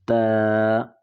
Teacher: تا کو باریک پڑھا جاتا ہے. زبان کی نوک اور اوپر سامنے کے 2 دانتوں کی جڑ سے جب لگے گی زبان کی نوک تو ادا ہوگا